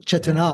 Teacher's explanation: Put the emphasis on the last long syllable